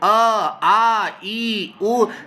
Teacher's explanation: आप गले पर हाथ रखकर चेक कर लीजिए, अ आ ई उ, आपको कंपन महसूस होगा ही होगा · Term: संघोष वर्ण